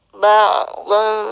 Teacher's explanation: ain tetap keluar dari tengah tenggorokan seperti kita di sana makhrajnya sama dengan huruf ha ya, ha seperti itu.